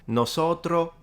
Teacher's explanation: it's becoming basically all the s's are dropped